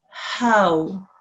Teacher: Here we have a waw lean and it's preceded by a fatha carrying ha, which is why it's a waw lean, and the ha with the fatha sign making the ha sound will be eased into the waw lean. Will be eased into the waw lean with the sound which will be how.